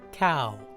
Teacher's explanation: do you hear how the w in cow actually makes an ooh sound